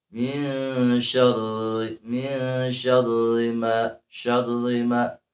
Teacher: ra lisan digetarkan lidahnya